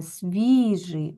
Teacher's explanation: звук і який і дає ось цю пом'якшеність далі звук ж буква и передає звук и але наближений до е тому що він у нас ненаголошене свіжий у нас наголос на і падає так свіжий і закінчується